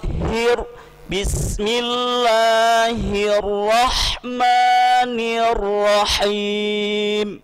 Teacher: Tetapi ra walaupun dia ada sifat takrir, berulang ra-nya, tapi jangan sampai berlebihan, tidak boleh lebih.